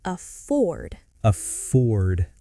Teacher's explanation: it's important to stress the second syllable, not offered, it's afford.